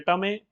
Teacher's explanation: સુરતી બોલી તો લક્ષણ છે તથ દ ધ ની જગ્યાએ ટ ઠ ડ ઢ બોલાય